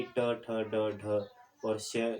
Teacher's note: इसका उच्चारण करते समय जिह्वा जो है वह उलटकर नीचे के अग्रभाग से मूर्धा को छूती है और टकराकर अलग हो जाती है, और अतएव इन ध्वनियों को मूर्धन्य ध्वनियाँ कहते हैं, यानी कि ट, ठ, ड, ढ और श, यह जो ध्वनियाँ है वह मूर्धन्य ध्वनियाँ कही जाती है।